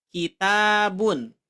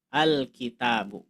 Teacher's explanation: Ketika ada alif lam, maka tanwinnya hilang.